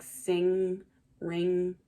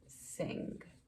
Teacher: And so remember, digraphs are two letters that make one sound. And so that NG sound, it's the N in the back of your throat, feel like sing, ring.